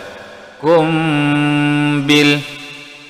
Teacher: mim mati berjumpa ba, ikhfa syafawi, dengung dua harakat.